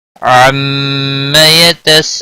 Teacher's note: لو واو مدہ ہے، 1 الف کے برابر کھینچ کر پڑھیں گے۔ نون وقف کی صورت میں نون ساکن پڑھا جائے گا، وقف بالاسکان ہوگا۔ 3 سے 5 الف کے برابر کھینچ کر وقف کریں گے۔ · میم مشدد پر غنہ ہوگا، الف مد متصل ہے، 5 الف کے برابر کھینچ کر پڑھیں گے۔